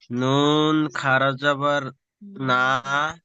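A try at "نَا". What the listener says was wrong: টানেন টানেন না, টানেন। আলিম মাতার মধ্যে টেনে পড়তে বলেছি।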